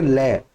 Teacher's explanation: ले में देखो जीभ दांतों पर लग रही है ना, और दांतों के ऊपर वाले हिस्से पर लग रही है